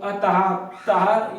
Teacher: जिन वर्णों के सामने विसर्ग लगे हैं उनका भी उच्चारण हा ही होता है